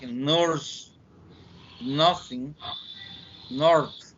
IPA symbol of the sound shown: n